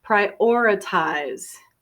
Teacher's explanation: some people put a strong stress on the second syllable